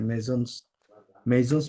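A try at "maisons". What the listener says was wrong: না, মেজস কেন পড়বেন? এসটা তো সাইলেন্ট থাকবে না। মেজন, মেজন,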